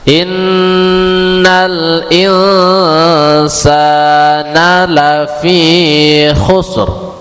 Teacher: Ro-nya terus tabkhim dan tebal.